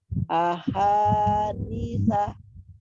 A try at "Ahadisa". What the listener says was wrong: Ya, tapi kalau dia terakhir huruf terakhirnya itu pendek, jangan dikagetin, jangan disah gitu. Jangan. Ahadisa, ahadisa, biasa aja. Jangan jangan dibantingin, dikagetin. Ahadisa, jangan gitu. Ahadisa.